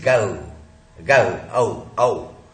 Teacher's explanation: We don't speak O in English because we don't have any vowel like O or any vowel sound like O. We have OW. Although it is not very clearly spoken as OW, but it is OW.